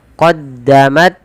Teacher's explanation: Syiddah itu tertahannya suara. Jadi pertama qaddamat, suaranya tertahan. Yang kedua hamas, alirkan nafasnya.